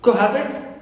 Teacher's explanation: Cohabit on ha, not on co.